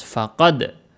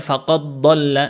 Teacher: jadi dia Qalqalah dulu gak dimasukkan ke huruf dad setelahnya